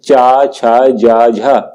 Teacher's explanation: तो जो आपके ऑप्शन नंबर बी में है, चा, छा, जा, झा, ये सब क्या है, तालब व्यंजन है। यानी कि जब हम इनका उच्चारण करते हैं तो हमारी जीभ क्या है, तालू से लगती है